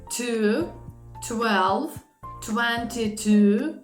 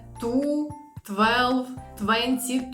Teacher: Перший раз я вимовляла ці слова з придихом а другий раз без